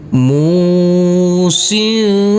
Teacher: tanwinnya kita baca dengan samar-samar dan kita dengungkan pada waktu berdengung persiapan masuk ke huruf jim. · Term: bacaan ikhfa